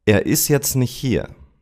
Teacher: In this short sentence, you have three words where the final T drops. Ist, jetzt and nicht.